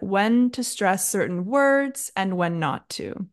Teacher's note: I stressed the word words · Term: word stress